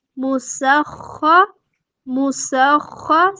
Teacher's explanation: سین پہ سیٹی واضح کریں گے، خا کو پورا موٹا پڑھیں گے، خراش کی آواز آنی چاہیے